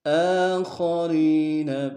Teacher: ستجدون آخرین، کھڑا زبر ہے حمزہ کے اوپر، ایک انداز میں کھینچیں گے، خا کو موٹا ادا کریں گے، را کو یا کے سامنے آئیں گے، یا مدہ ایک انداز میں کھینچیں گے.